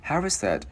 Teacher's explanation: Chữ V luyến qua chữ O nhẹ luôn